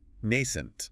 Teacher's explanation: Stress on the first syllable. 2 syllables.